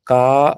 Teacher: கா என்ற எழுத்து நெடிலாக அதில் இருக்கக்கூடிய ஆ என்ற உயிரெழுத்தோட தன்மையோட இரண்டு மாத்திரை அளவு ஒளிக்கும்